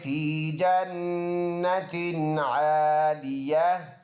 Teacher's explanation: نون مشدد ہے، غنہ کریں گے کلی کے اندازے سے، عالیتن وقف کریں گے تو دونوں نقطے اور دونوں زیر ہٹ جائیں گے سائلنٹ ہو جائیں گے، فی جنت عالیہ.